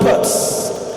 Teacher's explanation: When it is beside a voiceless consonant like T in pot, it comes out as S. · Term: assimilation